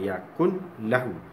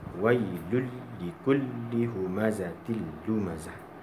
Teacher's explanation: Bila idgham, kita belajar dalam bab idgham ni pula, huruf nun itu dihilangkan.